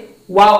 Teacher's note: the letter wow pronounced by pressing a circle of the 2 lips without the lips meeting completely